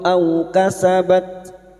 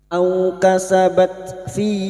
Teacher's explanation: Au fathah bertemu sukun kita lunakkan huruf waw